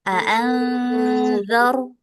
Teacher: Nih, ada ikhfa hakiki namanya. Jadi kalau kita ketemu nun sukun bertemu sama huruf zal, nah ini kita dengungnya sambil lidahnya ditempelkan ke gigi seri bagian atas. Ya, atau digigit sedikit.